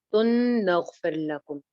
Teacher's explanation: फिर लकुम में रॉ बारीक है क्योंकि पीछे जेर है।